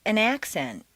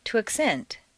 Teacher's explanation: change the stress from the first syllable for nouns to the second syllable for verbs